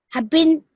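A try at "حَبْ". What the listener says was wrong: No, don't say the bin, okay, because we want to do a waqf here. So although you can see the stuff there, you have to imagine that there's a spoon on top, okay? Hub.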